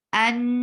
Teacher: As you find fatha immediate before Allah subhanahu wa ta'ala's name, you will make this Allah subhanahu wa ta'ala's name heavy. And that is just like saying law.